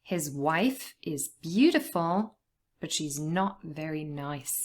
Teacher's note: it's also important to stress the word not because it's obviously changing the meaning